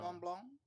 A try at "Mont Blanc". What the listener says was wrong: That sounds weird. The T and the C is silent, so it's not Mont Blanc. It's like Mont Blanc.